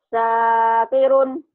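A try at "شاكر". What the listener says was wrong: Ah, anginnya kurang ini, hutang.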